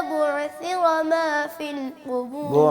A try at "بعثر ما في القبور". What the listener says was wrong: غور سے سنیے قاری صاحب کیسے ادا کر رہے ہیں. عین کو قلقلے سے نہیں پڑھنا، اس کو ذرا